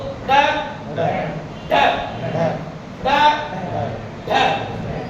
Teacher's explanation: जीभ का अगला वाला भाग ऊपर वाले कठोर तारों को स्पर्श करेगा और जीभ झटके से नीचे आ जाएगी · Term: उत्क्षिप्त, ताड़न जात